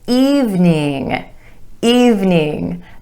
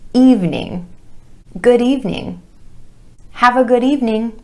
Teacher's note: 2 syllables with emphasis on the vowel sound E in the first syllable